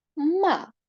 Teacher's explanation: він складається з твердого приголосного м і голосної а